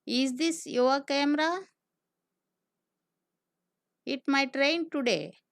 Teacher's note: Fall, rise intonation. Meaning, the voice falls and then rises.